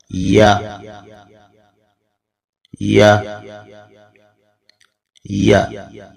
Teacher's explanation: جب وسط لسان مقابل کے تالو سے شین کی ادائیگی کی نسبت تھوڑا زیادہ فاصلے پر رہتا ہے تو یا غیر مدہ ادا ہوتا ہے۔